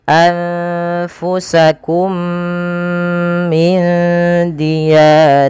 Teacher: memasukkan mim pertama kepada mim kedua dan ditahan suara mnya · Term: Idgham Mimi